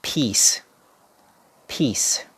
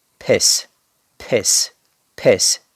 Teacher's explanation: the pronunciation is p very long e and s